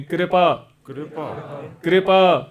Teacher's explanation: ਕਿਰਪਾ ਨਹੀਂ ਕਹਿਣਾ ਅੱਧਾ ਰਾ ਬੋਲਣਾ